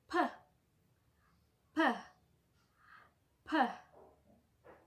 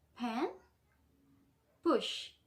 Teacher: The first part, let's talk about voiceless. There is no vibration in the vocal cords when we say it.